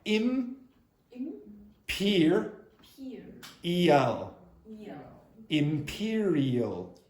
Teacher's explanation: When there's an M sound, she does not close her lips. You must close your lips.